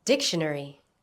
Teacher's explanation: Notice the stress on the first syllable.